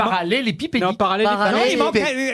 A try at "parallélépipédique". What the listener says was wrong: non, il vous manque une syllabe. Non, c'est parallélipédique.